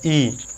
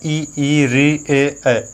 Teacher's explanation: हमारा जीभ का अग्र हिस्सा ही काम करता है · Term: अग्र स्वर